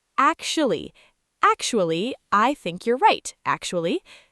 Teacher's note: Instead, it comes out more like acti or sometimes just actually in fast speech. The t blends with the c and the u and the final a is so tiny you barely hear it.